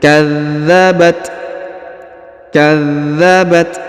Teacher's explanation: huruf ta berharakat sukun sehingga kita berikan hembusan tipis